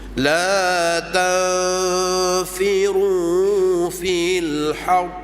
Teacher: Ra yang bersabdu kalau waqaf pun hendaklah disembunyikan getar.